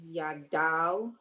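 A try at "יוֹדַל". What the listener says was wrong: Not ya. Look at that.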